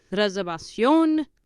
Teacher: the V pronounced with your lips, like your soft B